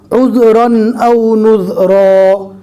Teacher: 2 زبر کو رکنے کی حالت میں الف مدہ بنا دیں گے